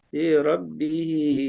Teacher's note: kemudian fi rabbihinya bisa dipanjangin ya, karena itu maj jaiz ya